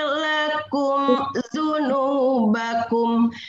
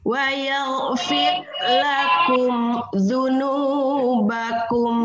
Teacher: Mim mati ketemu dza itu adalah izhar syafawi. Jadi jangan didengungkan.